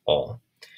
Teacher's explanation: alphabet which is like an all um so it's like a an uh sound but you round your lips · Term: omega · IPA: ɔ: